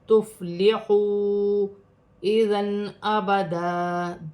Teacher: چھوٹی مد بھی ہے, 3 الف کی مقدار تک کھینچ کر پڑھا جائے گا, جیسے تفلحوا اذن ابدا. 2 زبر کی تنوین میں غنہ نہیں ہوگا کیونکہ حمزہ آ رہا ہے. 2 زبر کی تنوین میں وف کی صورت میں 1 زبر گر جائے گا, 1 زبر 1 الف مدہ میں بدل جائے گا.